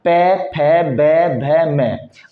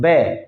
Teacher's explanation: बिना होठ एक दूसरे से टच किए आप पै वर्ग को बोल ही नहीं सकते हो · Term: ओष्ठीय